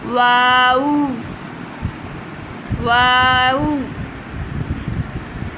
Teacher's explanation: جبکہ واو دونوں ہونٹ گول کر کے نامکمل بند کرنے سے اب واو کی ادائیگی ہوگی، یعنی واو کی ادائیگی میں ہونٹ نامکمل طور پر گول ہوں گے۔ ہونٹوں کو گول کریے گا اور پھر ادائیگی کیجیے گا واو کی، واو، واو۔